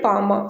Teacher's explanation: மேல் உதடும் கீழ் உதடும் பொருந்துவதால் பிறக்கும் இரு எழுத்துக்கள்